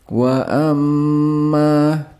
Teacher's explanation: Dalam wa amma, mim dengan tashdeed harus dibaca dengan bunyi sengau. Kemudian, huruf ma dibaca panjang, selama 2,5 alif, 3 alif, 5 harakat, atau 6 harakat.